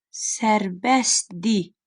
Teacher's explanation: S-T hərf birləşməsi var. Özündən sonra samit gəldiyinə görə tələffüzdə T düşəcək. D xəbərli şəkilçisi isə tələffüzdə R-sını itirəcək.